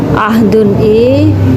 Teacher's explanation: Karena ada tanwin bertemu dengan huruf ain. Maka cara membacanya adalah jelas. Ahdun ainda, cepat, temponya cepat. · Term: idhar halqi